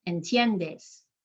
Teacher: entiendes is only 3 syllables because the I and the E work together to make one sound called a diphthong. And I'm emphasizing that second to last syllable, entiendes.